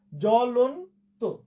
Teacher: কিন্তু আমরা এখন শুধু বফলার উচ্চারণ নিয়ে আলোচনা করছি। ফলে জয়ের সাথে ব ছিল, এই ব মানে বফলার উচ্চারণ হলো না